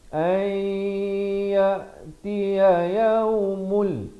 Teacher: Ayyatiya yaumul, idgham bila gunnah. Daripada yaumun jadi yaumul